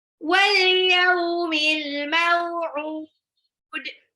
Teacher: Al mau'ud, alif lam qamariyah lagi, maunya sifat lin lagi, aud itu mad alif disukun tapi belakangnya ada qalqalah. Aud pantul.